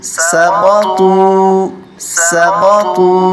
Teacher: قاف کو موٹا کریں گے اور طا کو بھی موٹا کریں گے